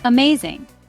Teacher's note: It is a three syllable word. Stress is on the second syllable.